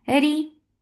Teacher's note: Ri is light because there is kasra on it.